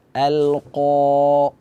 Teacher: Makhraj qaf ini berada di akar lidah bertemu dengan langit-langit langit-langit berdaging. Nah, cuma dia bersifat tebal sehingga suara terus kita arahkan ke atas. · Seharusnya di sini a kita baca infitah a, kemudian kita hadirkan lam sukun lam al-qa. Qaf merupakan huruf isti'la, huruf tebal. Jadi suara kita arahkan ke atas. Al-qa. Jangan kita baca al-qa, al-qa, walaupun makhrajnya sudah tepat.